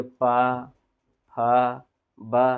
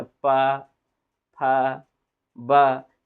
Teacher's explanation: तो आपके देखिएगा ओठ जो है ना, ओठ दोनों आपस में क्या होते हैं? चिपकते हैं। · यानी कि देखा जाए तो पा वर्ग का उच्चारण स्थान कहाँ से होगा? ओठ से होगा।